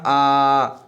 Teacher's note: विव्रत में आपका मुख है सबसे बड़ा खुलता है।